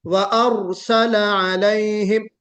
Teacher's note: इतना मत पुर कीजिए रा को कि सिफत तकरीर गायब हो जाए